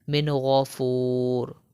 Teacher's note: نون ساکن ہے اور حرف حلقی میں سے غین آ گیا ہے، تو یہاں پر ہم غنہ نہیں کریں گے